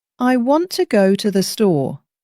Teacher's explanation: The important words, want and store, are stressed, while the small words are softer. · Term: stress pattern